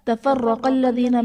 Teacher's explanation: تفرق الذین میں را پر زبر ہے، را کو پر پڑھا جائے گا۔ قاف حرف مستعلیہ ہے، پر پڑھا جائے گا۔